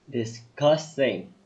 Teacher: The emphasis on the second syllable.